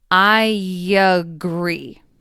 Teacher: is extremely subtle at least the way I say it but there is a y sound between I and at the beginning of agree